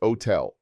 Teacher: notice that the H is silent and the stress falls on the final syllable